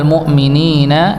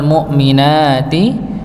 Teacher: al mu'minina, ninya dibaca 2 harakat, wal mu'minati nanya juga dibaca 2 harakat